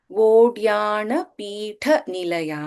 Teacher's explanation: ಠ ಇಸ್ ಮಹಾಪ್ರಾಣ here